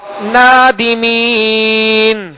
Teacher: وقف کی صورت میں ہم نے نون کو ساکن کیا جبکہ اس کے اوپر زبر ہے